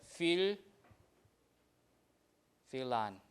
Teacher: F is not affected to V because it's in the beginning.